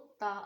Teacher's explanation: ता को जब ऊपर दो दांतों की जड़ में लगाएंगे तो ता अदा होगा